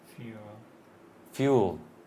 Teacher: in English we start with a y, like yellow